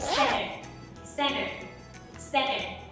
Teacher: Cơ mà trong câu này thì âm t lại đứng sau âm n, cho nên là cô sẽ bỏ luôn âm t đi. · nếu mà âm t đứng sau âm n trong một từ nào đấy thì thông thường mọi người sẽ bỏ mất âm t đi